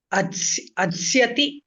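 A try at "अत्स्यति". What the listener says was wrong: Atsyati parasmaipadi. So ad dakarasya chartvam bhavati. So atsyati.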